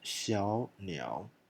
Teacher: So without is 小鸟. 小鸟, 2 third tones, first one becomes second